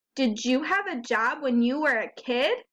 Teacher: you're asking a question your voice goes up a little bit at the end